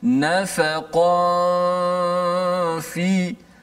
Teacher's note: Maknanya selepas daripada ya, kita terus berpindah, bersedia pergi ke makhraj fa. Cuma jangan terus tekan fa dengan kuat. Dengung dulu. Habis tempoh dengung dipanjangkan, baru kita menekan betul-betul makhraj fa. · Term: ikhfa hakiki